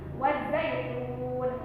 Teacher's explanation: Zait itu adalah mad lain, ya. Wazzaitun mad alif disukun turunnya, yaitu dibaca 2 sampai 6 harakat.